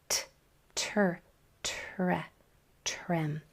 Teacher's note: focus on articulating the sound of that T and the R clearly. Don't let it turn into chur